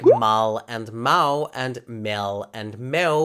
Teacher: What I'm talking about is the way that Brazilian speakers make the L at the end of words sound like a W. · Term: vocalization of L